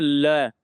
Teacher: जीभ देखना आपके साइड में हवा निकालती है, दोनों साइड की जीभ, ल, ल जैसे ही बोलेंगे वैसे दोनों साइड पे जीभ थोड़ा सा टच करेगी, ल, और ये पार्श्व एकदम से हवा साइड से निकलती, दोनों साइड से, पार्श्व, ल, ठीक है। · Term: पार्श्विक